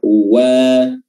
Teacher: huruf wa di sini adalah bibir dimonyongkan dan fathahnya dibaca terbuka. Wa ya, jangan dibaca tebal, wa, tapi wa.